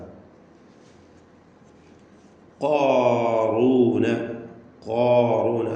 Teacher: നാവിൻ്റെ അങ്ങേ അറ്റം ആണ് ഖാഫിൻ്റെ മഖ്റജ്, അഖ്സൽ ലിസാൻ. ഖാറൂന, ഖാറൂന, അത് കാഫിലേക്ക് അടുത്ത് പോകരുത്.